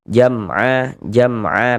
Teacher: Maka berarti hukumnya izhar syafawi. Maka dibaca jelas bunyi mim sukunnya. Kemudian tidak didengungkan, baca pendek saja. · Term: idhar syafawi